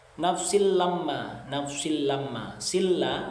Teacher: Silla idgham bila ghunah karena ada tanwin bertemu dengan huruf lam. Yang mana idgham bila ghunah ini ketika ada nun sukun atau tanwin bertemu dengan huruf di antara lam dan ro.